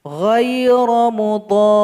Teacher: Di sini ada huruf dhad yang merupakan mad asli karena berjumpa dengan huruf ro yang bertasydid berubah menjadi mad lazim mutsaqqal kilmi. Makanya dhad ini harus dipanjangkan 6 harokat atau 6 ketukan dan tasydidkan kepada huruf ro dan baru diwaqafkan.